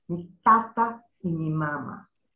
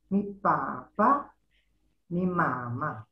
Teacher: Sephardic Papiamentu for my father, my mother, would be mi papa, low, high, mi mama, low, high. Again, mi papa, mi mama, low, high. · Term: Sephardic intonation